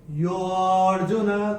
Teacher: जब इसको खींच के बोलेंगे यो अर्जुना तो अ निकल के आना चाहिए। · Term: अवग्रह